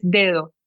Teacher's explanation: Nosotros tenemos dedo en portugués, pero la segunda D es un poco más débil, es dedo en castellano.